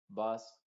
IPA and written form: bʌs (bus)